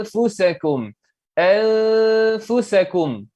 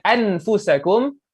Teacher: nun mati apabila bertemu dengan fa, maka bacaannya perlu diikhfakan. Perlu diikhfakan, disamar-samarkan. Itu dan juga didengungkan juga.